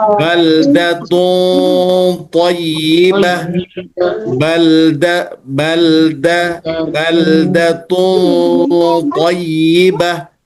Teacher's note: Maka tanwinnya ikut kepada ketebalan huruf th. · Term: ikhfa